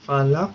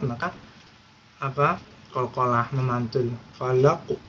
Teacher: Nah, yang terakhir qafnya juga ada qalqalah, memantul, falaq. Nah, karena disukun, karena di akhir ayat, maka qalqalah, memantul, falaq.